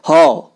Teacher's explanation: हो स्वरतंत्री या काकल्य, कंठ के पास स्वर तंत्रियों से वायु निकलने के बाद सीधे बाहर निकल आती है